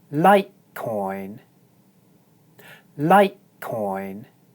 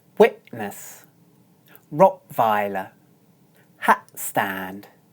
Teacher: If you listen carefully, you'll notice that I'm not actually making a t sound. Instead, I'm doing a glottal stop. That simply means that I'm tensing the muscles in my throat. We actually do this whenever the t consonant comes at the end of a syllable.